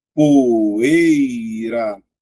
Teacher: o é mais forte, ó, poeira, então a letra I, ó, é uma semivogal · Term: ditongo decrescente oral